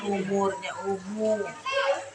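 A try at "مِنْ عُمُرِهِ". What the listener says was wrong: Enggak, jangan dipanjangin. Umurihi. Ain. Umur.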